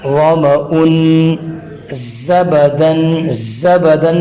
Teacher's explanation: زا کے اندر سیٹی کی آواز نکال کے ادا کرنا ہے